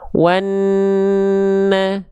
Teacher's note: Jadi an-nya ditahan dulu 2 harokat, an-nya, dengungnya, gunnahnya tahan dulu.